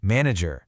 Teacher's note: But in the US version, that final R is much stronger, right? You really hear it.